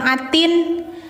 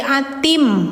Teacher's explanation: Ah, ini bacanya jangan atin tapi atim ya. Setelah tanwinnya menghadapi huruf mim. Jadi idgamkan dimasukkan suara n ke mim